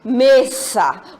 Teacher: quando eu pronuncio mesa, me é a sílaba tônica